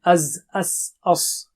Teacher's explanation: صفیرہ سیٹی کی آواز ہے